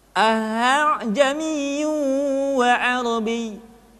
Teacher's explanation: Anjay niwa Abby tidak dibaca ah jami'un atau akan jami'un tapi Hamzah kedua dibaca dengan suara yang samar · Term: tashil, Tashil